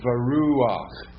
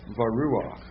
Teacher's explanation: Remember, you have to say the furtive patak before the chet.